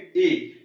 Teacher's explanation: तो जीभ हमारी ऊपर की तरफ जा रही है, छत की तरफ, तो ये तालव्य है।